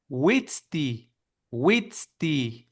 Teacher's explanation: w pronounced like an elongated U. Similar to the Spanish, for example, wit wit.